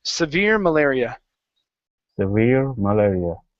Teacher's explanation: stress on the end